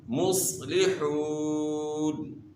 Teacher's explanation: صاد کو آپ نے موٹا کرنا ہے، صاد موٹے حروف میں سے ہے. اور واو ساکن سے پہلے پیش ہے، واو مدہ ہے، ایک الف کی مقدار کے برابر آپ نے کھینچنا ہے.